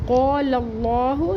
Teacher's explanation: لام کا زبر لام اسم جلالہ سے ملا کے پڑھیں گے اور اللہ کا نام پر پڑھیں گے، ہا کا پیش چھوٹا پڑھیں گے